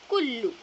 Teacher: تو یہاں پر میں نے کیا کیا، مشدد کے اوپر میں نے اسٹریس کرنا تھا، یعنی تھوڑا سا اس کے اوپر زور دے کر جو ہے پڑھنا تھا